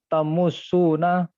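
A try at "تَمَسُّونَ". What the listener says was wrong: Jangan didom.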